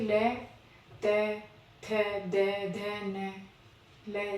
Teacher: जिसका जिसका उच्चारण स्थान दांत से होता है वो क्या है? दंत।